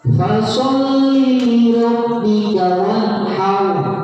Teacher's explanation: Cara membacanya adalah ditekan dan ditahan tanpa berdengung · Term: bertasydid